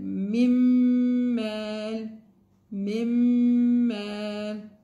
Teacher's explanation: It's supposed to be مِن مَال, but because of the إدغام we read it مِمَّال. We remove the نون.